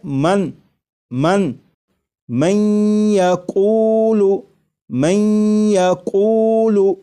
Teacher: نون ساکن کا یا میں ادغام بھی ہو رہا ہے، اور ادغام اس طرح ہو رہا ہے کہ غنہ کے ساتھ